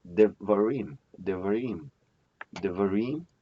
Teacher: de is the pro-pre-tonic, va is the pre-tonic, and rim is the tonic